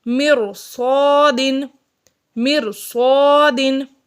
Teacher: را ساکن سے پہلے زیر اصلی ہے، یعنی اسی کلمے میں زیر ہے، اور اس سے آگے حروف مستعلیہ میں سے صاد آ گیا ہے، تو را کو یہاں پر پر پڑھیں گے